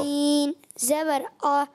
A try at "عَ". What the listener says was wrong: عین باریک کریں گے. اچھا, بعض بچے پڑھے عین زبر آ, موٹا کر دیں, یہ غلط ہو جائے گا. عین زبر آ, پڑھیے. آ. آ. آ.